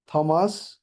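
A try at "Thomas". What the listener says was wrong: টমাস, সেটা কি হবে? থ না, টমাস এরকম হবে।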